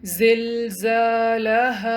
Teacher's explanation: اس word میں 2 دفعہ الف مد آ رہی ہے تو دونوں دفعہ اس کو 2 کاؤنٹ لمبا پڑھیں۔